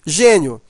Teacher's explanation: Eu tenho aqui, pessoal, ó, esse i aqui, ó, gênio. Veja que esse i, ele é pronunciado fraco, ele está ao lado de uma vogal e ele tem um som de i. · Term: semivogal